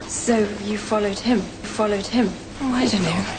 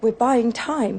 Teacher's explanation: vowel sounds that for me are dipthongs they get smooth in the direction of being one single vowel quality